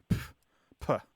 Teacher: What it is it's a spelling version of the sound that you make when you have a sudden disregard for something. So there's this sharp plosive sound that you make when you are reacting dismissively. So you go, like it's a sharp exhalation of air with a P sound at the beginning, like puh.